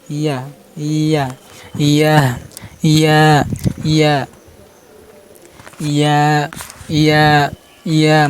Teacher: হরফ উচ্চারণ স্থান ইয়া, হরফ উচ্চারণ স্থান জিহ্বার মাঝখান ও সেবার উপরে তালুর সাথে লাগবে, মানে জিহ্বার মধ্যখান, এই দেখেন জিহ্বার মধ্যখান উপরে তালুর সাথে লাগছে, এই দেখেন জিহ্বার মধ্যখান উপরে তালুর সাথে লাগিয়ে উচ্চারণ হয়েছে।